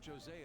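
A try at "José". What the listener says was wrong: Jose, not Jose. The J is silent. It's like an H.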